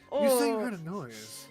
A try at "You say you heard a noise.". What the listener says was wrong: See, when I say it, she sounds like in pain and upset. When you say it, I don't. No, sounds like you're enjoying yourself a bit too much.